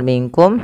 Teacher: pelafal minkum samarkan nunnya ke kaf